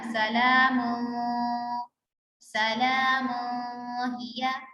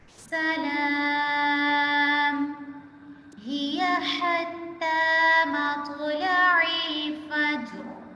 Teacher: میم کو ساکن کر دیں گے وقفے کی صورت میں